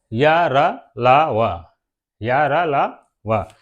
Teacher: ये हमारे एकदम गले के अंदर से निकलते हैं य र लावा इसलिए हम लोग इनको अंतस्थ व्यंजन कहते हैं